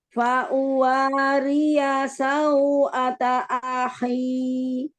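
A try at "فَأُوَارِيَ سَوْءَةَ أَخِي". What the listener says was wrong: Jangan ditamtit. Tamtit itu artinya memanjangkan harokat ya. Fa'uwariya sau'ata akhi. Jadi jelaskan hurufnya, Masya Allah.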